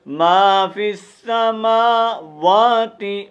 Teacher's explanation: ما فی السماوات، میم زبر الف ما، دیکھو یہ کھڑی زبر ہے، کھڑی زبر کو بھی ایک الف کے مطابق لمبا کریں گے۔ جدھر بھی کھڑی زبر آئے گی، کھڑی زیر الٹا پیش، ان کو ایک الف کے مطابق ہم کھینچ کر پڑھتے ہیں۔